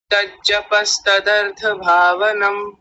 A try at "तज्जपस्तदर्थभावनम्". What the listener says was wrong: ठीक है, अब ठीक है, बहुत अच्छा है, शोभनम, उत्तम।